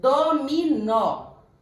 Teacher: o dominó a sílaba tônica é o nó é a última